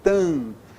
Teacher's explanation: Ó, só nasalizei a vogal anterior